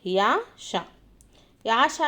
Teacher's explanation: యష యష ఏమవుతాయండి మనకు తాలవ్యాలు అవుతాయి. యా ష దేని కిందకి వస్తాయి తాలవ్యాల కిందికి వస్తాయి.